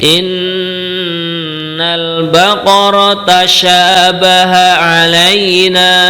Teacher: syin bertitik tiga kita baca lebih tebal